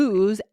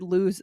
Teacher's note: it's just one O, lose is with the Z sound, even though they're both spelled with an S